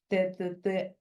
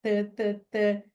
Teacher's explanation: Eu tenho que ter eh tã, a minha ponta de língua encostando lá em cima dos alvéolos. Por isso que ele é um som alveolar.